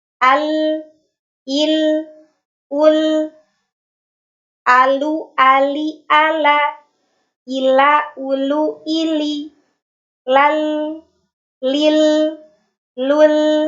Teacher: huruf lam ini memiliki karakter tipis karena pangkal lidahnya terhampar dan aula tengah lidahnya terbuka